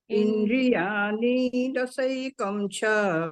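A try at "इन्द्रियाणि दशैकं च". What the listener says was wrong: इंद्रियाणि दशैकं, णी पे एकदम जस्ट टच करके आगे बढ़ जाइए। इंद्रियाणि पे ज्यादा देर नहीं रुकना है। इण पे इंद्रियाणि दशैकं च।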